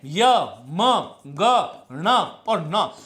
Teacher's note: पांचों वर्ग के जो पंचम वर्ण है वो नासिक्य है, स्पर्श से ज्यादा नासिक्य है, क्योंकि उनका उच्चारण स्थान नासिका से होता है।